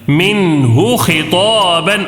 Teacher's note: الف سے پہلے زبر ہے تو الف مدہ ایک الف کھینچ کر پڑھنا ہے. منہ خطابا، اور یہاں پہ نون ساکن کا اظہار ہو رہا ہے.